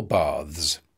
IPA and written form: bɑːðz (baths)